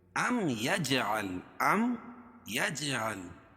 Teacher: جیم پر قلقلہ، کیونکہ حروف قلقلہ کے 5 حرفوں میں سے ہے اور ان پر جزم ہے · میم ساکن کے بعد میم اور با کے علاوہ کوئی اور حرف آئے تو اظہار شفوی ہوتا ہے، اس کو ظاہر کر کے پڑھیں گے